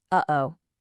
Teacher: It's basically this sound of silence, made on purpose, right in your throat. It's not a letter you can type, but it gives our speech so much character. · That little catch, that tiny hiccup right in the middle of the sound. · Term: glottal stop